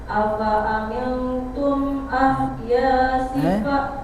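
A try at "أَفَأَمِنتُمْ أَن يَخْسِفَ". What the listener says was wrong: Bukan ahya. Ayyakhsifa. Ya dengung.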